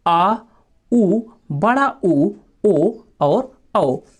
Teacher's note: इसके बाद देखिए दोस्तों पश्च स्वर, और पश्च स्वरों के उच्चारण में दोस्तों जीभ के पिछले भाग का इस्तेमाल होता है